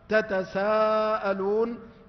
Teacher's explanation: وقرأ الباقون: واتقوا الله الذي تساءلون، وأصلها أيضا تتساءلون، لكن أضغمت التاء في السين لتقارب مخرجيهما، فإن التاء تخرج من طرف اللسان مع أصول الثنايا العليا، والسين تخرج من طرف اللسان مع أصول الثنايا السفلى